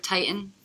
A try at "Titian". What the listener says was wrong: Titian. Titian. Titian is correct. There's another T in there. Titian.